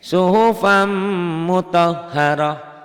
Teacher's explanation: Suhufan n-nya jadi m. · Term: idgham bi gunnah